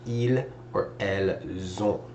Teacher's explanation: because it starts with a vowel again, we're going to link the two together and it's going to sound like ils or elles ont.